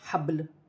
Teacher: وقف کی صورت میں دو پیش کی تنوین گر جائے گی اور لام ساکن ہو جائے گی. اور با جو ہے ساکن ہے، حروف قلقلہ میں سے ہے، درمیان میں آ رہا ہے کلمے کے، تو قلقلے کے ساتھ